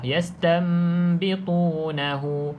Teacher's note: Cuma saya secara peribadi tukarkan terus nun kepada mim ni, rapat je bibir atas bibir bawah. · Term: iklab